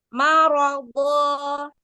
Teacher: agak isti'la, jadi tebal, karena huruf bo termasuk huruf isti'la yang harus kita tebalkan